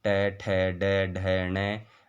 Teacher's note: इनका उच्चारण स्थान मूर्धा है